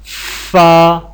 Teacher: ثنایا اولیہ کے کنارے اور نچلے ہونٹ کے اندرونی حصے ملنے سے یہ حرف ادا ہوتا ہے